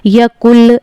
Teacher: यकुल नून को नहीं पढ़ेंगे बल्कि काफ को लाम में मिलाकर पढ़ेंगे